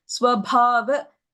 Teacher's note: Second line, first word, Swabhava. Bha is a Mahapranah.